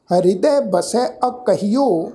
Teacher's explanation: ਐੜਾ ਅੱਖਰ ਅਗੇਤਰ ਹੈ, ਇਥੇ ਹਲਕਾ ਜਿਹਾ ਸਾਧ ਸੰਗਤ ਜੀ ਅਸੀਂ ਪੋਜ ਦੇਣਾ, ਹਲਕਾ ਜਿਹਾ ਵਿਸ਼ਰਾਮ ਦੇ ਕੇ ਪਾਠ ਉਚਾਰਨ ਕਰਾਂਗੇ